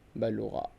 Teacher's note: बा के ऊपर जो हरकत पढ़ रही हैं उसे शॉर्ट करें